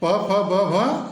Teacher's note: प फ ब भ ओष ध्वनियां है